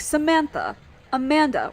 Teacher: names too like Samantha Amanda where the stresses on the second syllable